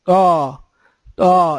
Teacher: حرف موٹا ہے، طا طا۔ اس میں تھوڑا بہت منہ بھی گول ہوگا، طا، لیکن چہرہ نہیں بگاڑنا۔